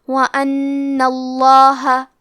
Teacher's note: قدیر وَأَنَّ، کلمت وَأَنَّ کے آخری میں نون پہ تشدید زبر کا ہے، تو ہمیں لفظ الجلالہ مطلب کلمت اللہ کے لام کو موٹی آواز میں پڑھنا ہے